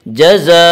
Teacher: حروف مدہ کے بعد حمزہ اسی کلمے میں ہے، اس لیے مد متصل ہوگا، اور مد متصل کو 3 یا 4 الف کے برابر کھینچ کر پڑھیں گے۔ جزاء، حمز کے اوپر 2 زبر کی تنوین ہے، تنوین اور نون ساکن کی آواز یکساں ہوتی ہے۔